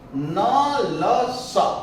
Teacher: जीभ का अगला हिस्सा सीधे दांत को न छूकर दांत से लगे हुए मसूड़े को स्पर्श करता है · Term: वत्स्य वर्ण